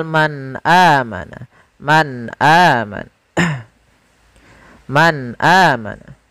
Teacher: ada nun sukun, ada nun yang disukunkan bertemu dengan huruf hamzah setelahnya, sehingga suara nunnya tadi harus jelas karena izhar itu adalah kita menjelaskan suara muzharnya, menjelaskan huruf yang dibaca jelas, yaitu suara nunnya harus jelas.